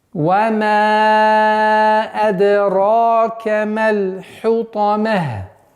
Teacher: При остановке касра аннулируется, уходит звук та и превращается в ха.